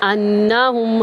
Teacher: حمزہ کو نون میں داخل کریں گے، غنہ کریں گے